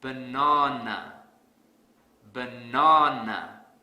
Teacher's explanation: because I don't stress the second syllable so to fix this I will stress the second syllable really hard